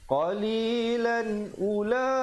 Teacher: Qalilan, dan di situ ada waqaf qabih, sebaiknya jangan dihentikan sebabkan tanwin bertemu hamzah jadi izhar. Jadi sempurnakan bunyi lan, jangan dipanjangkan. Qalilan ula, terus masuk ula.